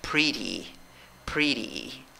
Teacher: de izquierda a derecha pero mira cada sílaba tiene una diferente la primera sílaba tiene una y corta la segunda sílaba tiene la y con sombrero que es larga · Ok, escribes con seis letras la palabra, la pronuncias con cinco sonidos y mira, esto es clave. Divides esta palabra en dos sílabas, la fuerza de voz en la primera sílaba contando de izquierda a derecha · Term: I corta